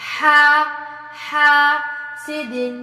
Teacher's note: ومن شر النفاثات فی العقد، ومن شر حاسد، ہا کو اچھے سے گلے کے درمیان سے وسط الگ سے ادا ہوتا ہے، ہا، الف مد، الف سے پہلے زبر لمبا بھی کرنا ہے